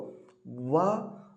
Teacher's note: ವ ಅನ್ನುವಂತಹ ಒಂದು ಅಕ್ಷರ ಏನಿದೆಯೋ ಇದು ಹಲ್ಲು ಮತ್ತು ತುಟಿಯ ಸಹಾಯದಿಂದ ಹುಡ್ತಾ ಹೋಗುತ್ತೆ. ಅದಕ್ಕೆ ನಾವು ದಂತ್ಯೋಷ್ಟ್ಯ, ದಂತ ಪ್ಲಸ್ ಓಷ್ಟ್ಯ ಅಂತ ಅರ್ಥ.